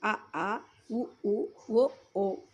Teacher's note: మూలం మృదు తాలువు వైపు లేస్తే పుట్టే అచ్చులు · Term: పశ్చిమాచ్చులు